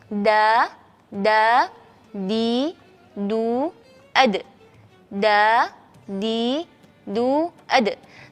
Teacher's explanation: Jadi da, tidak ada angin, cuma ada suaranya saja. Da, di, du, ad. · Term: jahar